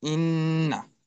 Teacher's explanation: উচ্চারণে মুখের সাথে সাথে উচ্চারণের কিছু অংশ নাক দিয়েও বের হবে। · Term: গুণনা, গণ্যা